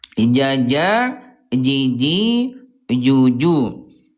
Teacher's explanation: huruf jim dari segi udara dia punya sifat huruf ayah bunda namanya jahr